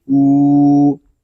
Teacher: یہاں واو مدہ ہو رہا ہے، حمزہ کو ہم ایک الف تک کھینچ کر پڑھیں گے